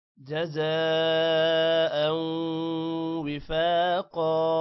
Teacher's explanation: جزاء زا کے بعد الف پر مد لمبا ہوگا، او غنہ ہوگا، وفاقا فا کو بھی لمبا کریں گے، قا کو بھی لمبا کریں گے.